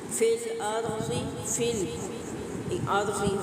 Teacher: रा साकिन माक़बल ज़बर है तो रा को पुर करके अदा करेंगे।